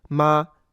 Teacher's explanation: it's usually indicated as a flat, high-pitched tone · go for a comfortable high pitch within your voice. The note you hit does not matter. As long as the tone is flat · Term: first tone